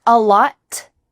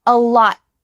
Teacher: You're going to make that T sound, but you don't. Instead, it just gets cut short. Your tongue stops at the top of your mouth. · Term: final T is stopped